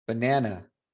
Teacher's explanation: that last A at the end, that's your schwa